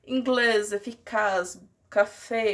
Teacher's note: colocam mais força na palavra na última sílaba dela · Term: palavra aguda